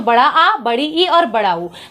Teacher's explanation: अब हम बात करेंगे दीर्घ स्वर का। तो दीर्घ स्वर को बोलने में ह्रस्व से दुगना समय लगता है। इसकी मूल संख्या 3 होती है।